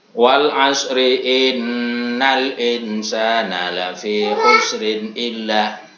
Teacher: hunahnya nun dan mim yang bertasdid panjangnya ini sekitar 2 harokat